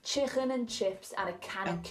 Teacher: You may hear some people from Liverpool saying chicken with a sound in the throat.